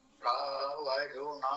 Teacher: ഇവിടെയൊക്കെ മിത്രാവരുണ എന്നുള്ളത് സർവ്വാനുദാത്തായിട്ടാണ് ഉപയോഗിച്ചിട്ടുള്ളത്